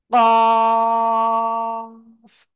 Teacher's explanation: জিহ্বার গোড়া তারপর আবার উপরে তালুর সাথে লাগাবেন, লাগিয়ে মোটা আওয়াজে উচ্চারণ করবেন। কফ, চার লিপ টান হবে।